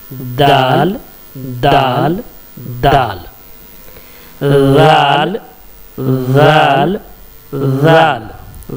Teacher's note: जुबान की नोक को सामने के ऊपर वाले दांत की जड़ में टच करने से, सटाने से दाल निकलेगा। दाल, देखिए जुबान की नोक को सटा करके, दाल, दाल, दाल।